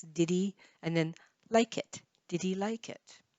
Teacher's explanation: the H disappears and the D links